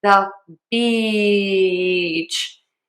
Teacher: To say this long tense e beach. Really smile. You love the beach. Make that word really long